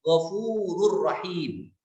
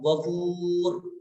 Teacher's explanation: Ghafurun ada nun sukunnya ketika pengucapan, tapi ketika waqaf ghafur menjadi sukun